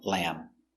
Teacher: the B is silent no lamb finish with the m sound